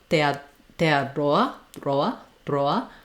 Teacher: So it's like the Spanish R, where it's basically a flap. Tongue is touching up behind the teeth in the front.